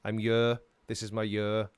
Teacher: Obviously I've got an accent, I'm Welsh, but we tend to drop the H off the front.